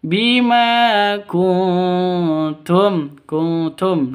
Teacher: Samar didengungkan siap-siap ke huruf t-nya karena bacaan ikhfa.